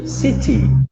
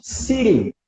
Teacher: É o T que em inglês britânico é T, é um som de T mesmo. E no American English é esse flat T.